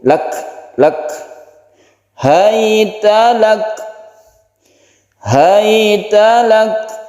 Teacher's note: kaf ini juga mempunyai sifat hamas atau mahmus, jadi tidak dikolkolahkan, tidak pula dilepaskan. Jadi ini ada, setelah kita tekan itu ada lelehan sedikit.